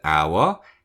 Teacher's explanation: in the word hour, H is silent. So it actually begins with a vowel sound.